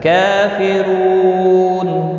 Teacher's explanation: کاف کے اوپر کھڑی زبر ہے، 1 الف کے برابر کھینچ کر پڑھیں گے